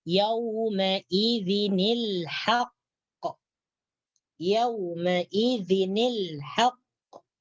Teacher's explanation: bariskan kasrah kepada nun mati yang terdapat dalam tanwin tersebut, maka akan menjadi yauma idzinil haqq.